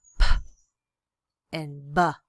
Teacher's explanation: Okay, so it's classified, these consonants classified on voicing, on place of articulation, and the place of articulation in this case is bilabial, meaning we're using both lips to hold the breath stream and then build up the air before exploding it out